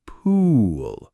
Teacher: your lips are more rounded and protruded, more puckered. It's a longer tense sound. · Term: u sound